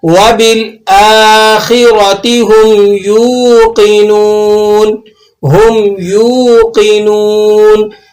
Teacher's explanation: یہاں آپ نے جھٹکا نہیں لگانا بلکہ اس واو مدہ کو آپ نے نرمی کے ساتھ ادا کرنا ہے